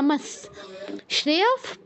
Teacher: বিসর্গর জায়গায় দন্ত হসন্তর মত উচ্চারণ করতে হবে